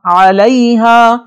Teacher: عین کو واضح پڑھنا ہے، اس کو نہ حمزہ پڑھیں گے نہ مبہم کر کے پڑھیں گے